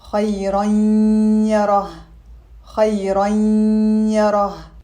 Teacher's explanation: Here we have an Idgham with gunna because we have a tanween followed by a ya, which is a letter of Idgham with gunna.